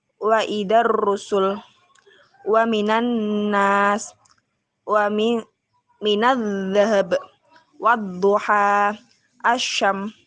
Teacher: Adapun ciri-cirinya yaitu pada alif lam syamsiyah terdapat tanda tasydid. Huruf al pada alif lam syamsiyah tidak dibaca al, melainkan melebur ke dalam pada huruf di depannya. Di depan huruf al terdapat huruf syamsiah. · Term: idgham syamsiyah